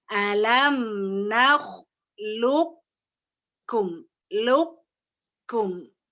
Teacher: Sifat isti'ala dari qaf masih ada. Tetapi tadi kan qalqalanya hilang, qafnya juga qalqalanya hilang. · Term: nakis